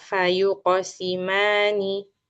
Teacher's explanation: Coba lagi, fa-nya tipiskan, jangan fo.